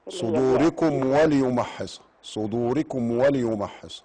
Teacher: الميم اظهار شفوي واضح لان بعديها الواو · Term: إظهار شفوي